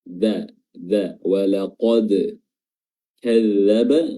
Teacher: makhraj huruf dal adalah ujung lidah bertemu dengan pangkal gigis dari atas